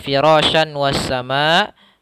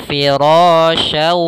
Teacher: memasukkan syan ke waw sehingga langsung seakan-akan huruf wawnya tasydid, hilang suara nunnya dan langsung masuk ke waw. Maka kita membacanya firasyau sambil ditahan gunnahnya. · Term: idgham bi gunnah